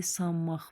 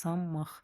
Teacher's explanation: n-dan sonra m gələndə m kimi tələffüz olunur. Q da olacaq x, sanmaq.